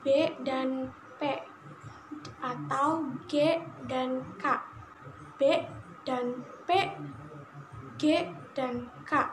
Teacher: ketika membunyikan kontoi tertentu, misalnya bunyi B dan P atau G dan K, B dan P, G dan K. Ternyata getaran di dalam dada terasa atau terdengar lebih keras ketika mengucapkan bunyi B dan G dibandingkan ketika mengucapkan bunyi P dan K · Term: bunyi bersuara